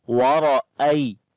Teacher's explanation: حمزہ کو یا کے ساتھ ملائیں گے، یا لین نرم پڑھیں گے